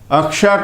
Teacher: तो ये त्रिस्थानिक है, कंठ्य, मूर्धन्य, कंठ्य। अक्ष का उच्चारण स्थान, ये संयुक्त व्यंजन वर्ण है।